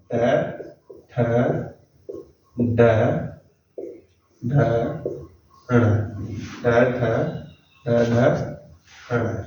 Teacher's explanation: और इनका उच्चारण स्थान हमारा क्या होगा, मूर्धा